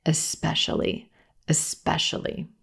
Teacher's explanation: but there's no X in the first syllable in this word it's just the e as in red vowel right into the S sound